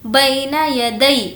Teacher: یالین مطلب یا جس پر جزم ہو اور اس سے پہلے زبر ہو, اس کو ہمیں نہیں کھینچنا ہے. یا ساکن سے پہلے زیر ہو تو وہ یا مدہ ہوگا, اس کو کھینچ کر پڑھیں گے.